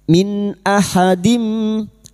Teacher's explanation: Biha min nun sukun bertemu hamzah idhar halqi. Nun sukun dibaca jelas tanpa mendengung.